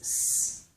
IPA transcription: s